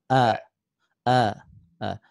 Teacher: itu Hamzah disini tenggorokan bawah ya